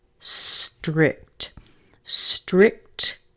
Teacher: the KT sit on top of one another